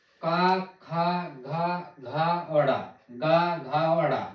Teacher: वह व्यंजन जिसके उच्चारणों से जीभ के पिछले भाग से कोमल तालु का स्पर्श होता है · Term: कंठ व्यंजन